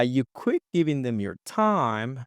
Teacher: He's putting the stress on time here, guys. As I told you, he's just going for staircase intonation.